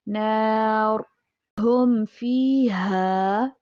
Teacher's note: نار را کو وقف کی صورت میں موٹا کریں گے